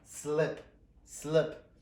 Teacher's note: O som aqui, ele não é o I e não é o E. É uma vogal diferente, que nós não temos